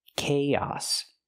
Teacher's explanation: Use the k sound like cake, plus the long A, K, and then the ah sound like hot and stop. Chaos. We link the two vowels with the y sound like yes and yesterday.